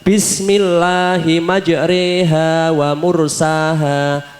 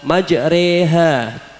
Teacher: sebagai imala dalam Surah Hud ayat 41, yang berarti memiringkan huruf alif ke arah ya.